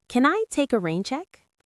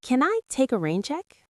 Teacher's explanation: Your intonation went up at the end, which is exactly right because it is a question.